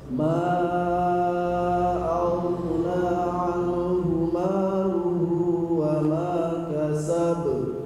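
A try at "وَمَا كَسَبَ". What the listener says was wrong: Masih diayun. Tidak kasab. Wa ma kasab. Wa ma kasab.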